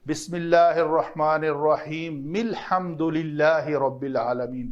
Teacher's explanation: جیسے الحمدللہ سے پہلے الف کے اوپر زبر ہے، لیکن جب ہم ملا کر پڑھیں گے بسم اللہ الرحمن الرحیم الحمدللہ رب العالمین پڑھیں گے، تو یہ جب ملا کر پڑھیں گے تو یہ حمزہ وصلی کی حرکت جو ہے وہ حذف ہو جائے گی